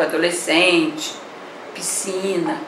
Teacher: Há dígrafo porque tem SC, mas eu não pronuncio a letrinha S.